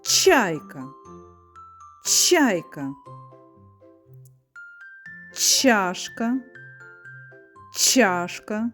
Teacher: Звук ч неможливо проспівати, він називається твердий, приголосний